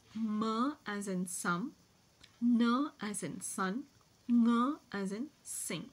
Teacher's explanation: complete oral closure are called as nasal sounds that is the oral passage is blocked and the nasal passage is open and a escapes through the nasal passage so the sounds M